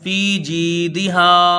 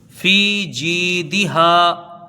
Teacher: دونوں یا مدہ ہیں، ان کو ایک ایک الف کے برابر کھینچ کے پڑھا جائے گا۔ فی جی ہے نا، دال کے نیچے زیر ہے، اس کو جلدی پڑھیں گے، ہا کے ساتھ الف مدہ ہے، اس کو ایک الف کے برابر کھینچ کے پڑھیں گے، فی جیدہا۔